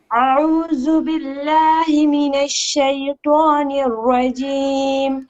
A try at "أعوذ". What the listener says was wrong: Okay, a'udhu, dhal, not zu. No, not za. This is not correct. This is that, dhal, a'udhu. No, not zu. There's zu and there is dhu. Dhu, dhal, zay, za, dha, za, dha. No, not right at all. Not a'udhu. A'udhu, dhal, a'udhu.